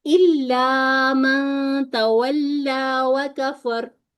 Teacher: पीछे फा पर फथा है, इस सूरत में रॉ को मुफख्खम पढ़ेंगे